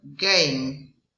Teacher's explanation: It's velar and plosive.